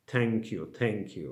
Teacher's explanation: things like thank you using incidental t like polish t but it's not fricative it's plosive